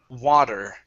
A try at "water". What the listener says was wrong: when you're saying it your tongue has to hit the top of your mouth harder because if not it sounds like this war